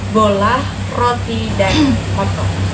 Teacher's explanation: Lidah di belakang pada posisi menengah, bibir membulat tetapi tidak terlalu sempit. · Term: vokal O